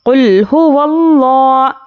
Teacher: لفظ اللہ سے پہلے یہاں پر زبر ہے، اس لیے ہم لفظ اللہ کو پر پڑھیں گے. لام کھڑا زبر لا، قل هو اللہ، ہا پیش ہو، قل هو اللہ.